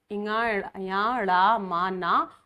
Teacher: ये नासिका से बोले जाते हैं, इसमें नासिका की अधिक सहायता लेनी पड़ती है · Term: पंचम वर्ण